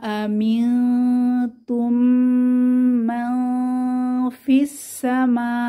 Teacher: এখানে মাতে 4 আলিফ টান হবে, মাদের সাইন আছে।